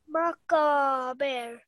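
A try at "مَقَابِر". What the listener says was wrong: Now this qaf is thick, okay? Maqabir.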